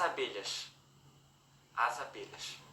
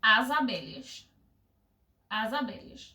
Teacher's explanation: Antes de vogal não tem chiado